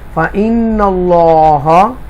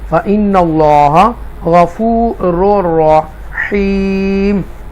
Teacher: یہاں پر اللہ کے نام کو تفخیم کے ساتھ پڑھیں گے کیونکہ اس سے پہلے نون مشدہ زبر کے ساتھ ہے